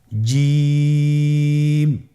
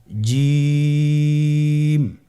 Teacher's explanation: আপনারা জিহ্বার মধ্যখানটা লক্ষ্য করুন এবং তার বরাবর উপরে তালুর সঙ্গে লাগান, এরপর হরফটি উচ্চারণ করুন, দেখবেন হরফটি শুদ্ধভাবে উচ্চারিত হবে।